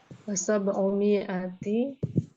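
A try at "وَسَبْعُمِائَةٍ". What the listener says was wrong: tin. Harus tanwin Nah, karena ada waw setelahnya.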